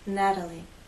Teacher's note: Again, Americans will not say Natalie, they will say Natalie. The T having very quick, light contact.